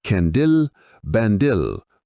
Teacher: They will be vocalized in the form of a song, prolonging the sound of the vowels and raising the voice in the first syllable of each word and lowering it in the second syllable